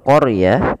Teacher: Kemudian pelafal qaryah, di situ huruf ro-nya ditebalkan. Karena huruf ro yang didahului dengan huruf fathah, maka dia kita namakan dengan ro tafkhim, harus tebal